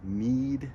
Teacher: need is in the very front of the mouth and it is also at the very top of the mouth. Your tongue is in a really high position in your mouth when you say it. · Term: long iota